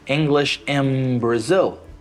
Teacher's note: when you say English in Brazil, the N sound changed into M, and that's an assimilation